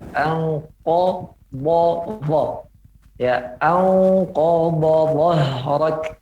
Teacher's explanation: Kita harus mengetahui tempat maksudnya terlebih. Ko, yaitu pangkal lidah, bertemu dengan langit bagian dalam, ya, yang atas bagian lunaknya o. Sementara dha kita harus tahu tempatnya bagian tepi lidah.